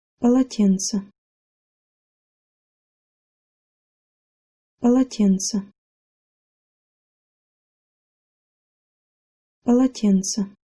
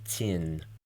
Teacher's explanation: Most of the syllables in this word are hard. Pa, la, and then tse at the end. However, in the middle, tsin is soft. Try to make sure you say this T sound with the middle of your tongue pushed toward the roof of your mouth and the front of your tongue down towards your lower teeth.